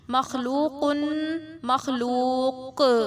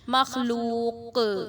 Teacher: یہ جو قاف ہے اس پہ میں نے قلقلہ کیا وقف میں, تو یہ قلقلہ کی آواز ہوتی ہے کہ اس آواز کا واپس لوٹنا